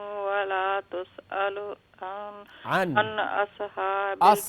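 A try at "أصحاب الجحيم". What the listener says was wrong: ساتھ میں قلقلہ نہیں اصحاب الجحیم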